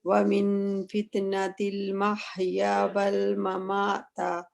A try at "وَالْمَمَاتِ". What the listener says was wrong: بس آپ نے نا مماتا کہہ دیا. تا کے اوپر زبر نہیں ہے. زیر ہے. زیر ممات.